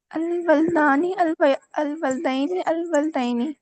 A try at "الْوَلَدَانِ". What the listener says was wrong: آپ نا دوسرے حرف کو نا جزم میں بدل دیتی ہیں. کل بھی آپ نے یہی کیا تھا.